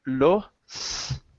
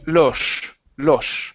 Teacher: In Spain, when you pronounce the S, your tongue comes up.